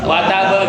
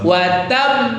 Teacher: Jadi kalau ada huruf qalqalah bertasydid terus diwakafkan, maka cara bacanya adalah selesaikan urusan dengan tasdidnya dulu, tahan dulu baru keluarkan qalqalahnya.